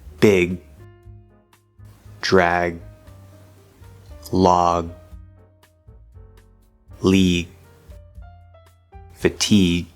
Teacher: there needs to be this sort of little voice sound there because if you don't have that little bit of voice as you cut off the sound it's going to sound more like a k glottal stop k we don't want that of course if we connect them